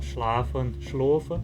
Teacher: Já um A longo do alemão médio continuou como um A longo em alemão e no monsriquiano virou um O longo.